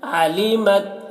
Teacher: تا میں قلقلہ نہیں کرنا ہے علمت آواز کو تا میں روک لینا ہے